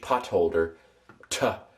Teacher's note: Now originally it was probably more of a t, kind of a breathy t, t. You know how some people from India do with like D's.